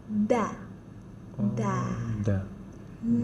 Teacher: jadi posisinya tuh ujung lidah bertemu dengan belakang gigi seri atas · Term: huruf Dal